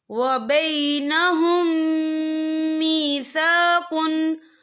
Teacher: या देखिए यहाँ मीम साकिन है, मीम साकिन के बाद जो है मीम मुशद्दद वाला रूफ आ रहा है, तो यहाँ पर इदगाम शफ़ी होगा। हम पिछले मीम को अगले मीम में मदगम करेंगे और हम यहाँ गुन्ना भी करेंगे।